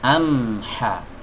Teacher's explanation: huruf H keluar dari tenggorokan bagian tengah amha bukan dari tenggorokan bawah amha